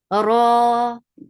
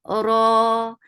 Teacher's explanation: Ra, give takrad in ra, make it 2 counts long.